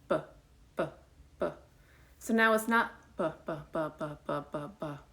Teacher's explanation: you're feeling a little explosion of breath there with a sounded b